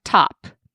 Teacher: We need to link the stop sound with the vowel in order for it to work and not sound so choppy, instead of just the segmented t, ah, p.